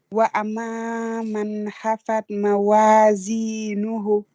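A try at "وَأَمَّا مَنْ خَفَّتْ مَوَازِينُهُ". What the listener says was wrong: Alors, quand on s'arrête, c'est toujours sur soukoun. Donc, on fait mawazinu. Puisque quand on dit mawazinuhu, on est obligé de continuer si on fait la voyelle. Et voilà, le kha aussi, il faut la gonfler. Il faut la gonfler. Ça fait wa ma man khafat. Khafat, kha.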